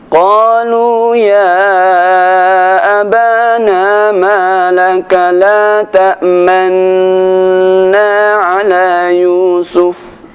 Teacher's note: Ada sedikit monyongnya ketika kita membaca lafaz la ta'manna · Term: Ishmam